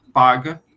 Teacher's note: O P é emitido com obstrução total nos lábios, porque elas são bilabiais.